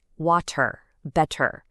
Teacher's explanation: Of course, you've got the R at the end, but listen really closely to what happens to the T right in the middle. In British English, that T is super crisp and clear.